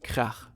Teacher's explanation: German has the special ach sound, which sounds very throaty.